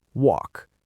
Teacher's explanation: It ends in an unvoiced k sound.